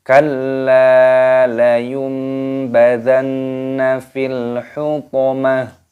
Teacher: Di sini lamnya terdapat tasdid maka ditekan, dimasukkan, dan lam alifnya dibaca panjang 2 ketukan. Kalla, jangan panjang-panjang.